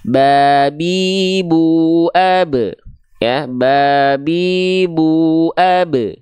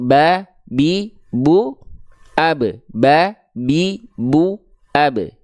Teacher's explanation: Batuah itu B itu Ba itu ya Jadi huruf ba itu dilafalkan sebagaimana kita melafalkan huruf B pada abjet alfabet dengan menyentuhkan bagian bibir atas dan bibir bawah kita